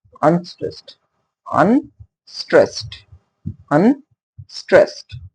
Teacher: Here you can see un has been less effort. We need less effort to say un, but we have to put more effort to say stressed. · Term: stressed syllable